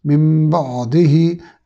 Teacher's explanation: ऐन को हलक के दरमियान से अदा करना है। अगर बेध्यानी से पढ़ा जाएगा तो मिन बादिही ये हा बन जाएगी, मानी बदल जाएंगे। · नून साकिन के बाद चूँकि बा है तो इसको इकलाब कहते हैं, यानी नून को मीम में बदल कर पढ़ना है, जिसकी अलामत के तौर पर छोटी सी मीम नून के ऊपर लिखी हुई है।